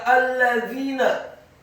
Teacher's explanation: dha-nya dibaca tipis, lidahnya agak keluar sedikit